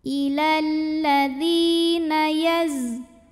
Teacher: Huruf zai punya sifat yang tidak memiliki lawan, namanya shofir, berdesis.